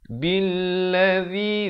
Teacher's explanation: billadzi zi di hujung lidah. Zi dibacakan 4 atau 5 harakat.